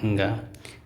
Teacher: अनुनासिक व्यंजन वो होते हैं इन व्यंजनों के जो उच्चारण होती है, ध्वनि जो होती है वो नाक से निकलती है, इसलिए इन्हें अनुनासिक या नासिक व्यंजन भी बोला जाता है। इनकी जो ध्वनि होती है वो नाक से निकलती है।